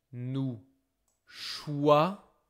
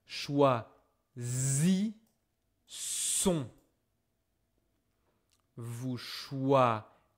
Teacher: This is the sound Z, hein, because I have a S between two vowels.